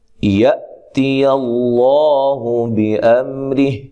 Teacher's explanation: حمزہ کو جھٹکے سے ادا کرنا ہے